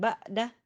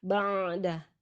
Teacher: Kemudian ba'da ada ain sukun dipenuhi sifat tawasutnya, jangan disamakan dengan huruf hamzah ya, jadi tidak dibaca syiddah, jangan ba'dah tapi ba'da.